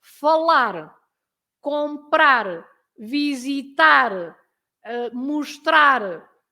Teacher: So you always stress the last part of the verb, the word, because it finishes with an R.